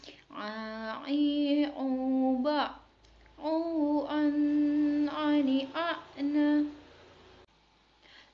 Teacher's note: huruf a yang dikeluarkan dari tengah-tengah tenggorokan